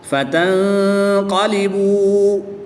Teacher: نون ساکن کے بعد قاف حروف اخفا میں سے ہے تو یہاں پر غنہ ضمانی کر کے پڑھیں گے